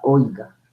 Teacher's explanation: vocal abierta más cerrada la o es abierta la i es cerrada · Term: diptongo